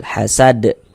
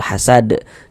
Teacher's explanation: Karena huruf dal ini kan kedudukannya menjadi sukun sebab kita sukunkan. Sedangkan huruf dal itu termasuk salah satu huruf qalqalah. Maka kalau sukun dia mantul, hasad. Dan ini masuk pada qalqalah kubra karena kita berwakaf di huruf qalqalah.